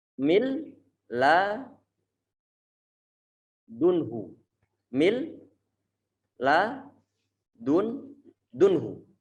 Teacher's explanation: Saat mereka itu bersebelahan, nun sukun kemudian bertemu dengan lam, maka perlu untuk diidghamkan. Kalau diidghamkan maka menjadi satu huruf lam yang bertasydid.